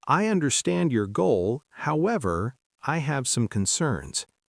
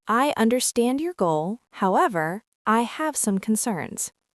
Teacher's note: We should emphasize however to show a polite shift in the conversation.